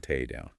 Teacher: We often glottalize takedown, turning the K into a glottal stop before the D, resulting in tay down.